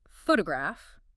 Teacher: you start with photograph stress on the first syllable